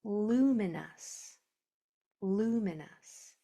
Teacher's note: But we don't hear the O. We only hear the uh but when you hear us at the end of a multi-llable word, it's usually a suffix that is spelled o us.